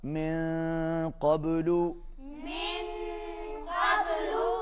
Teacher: با پر قلقلہ ہوگا